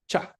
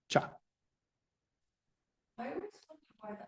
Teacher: of the uh oral tract completely no air can exit but the closure you do raising your tongue up and towards the front so when you open the characteristic sound cha comes up cha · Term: palatal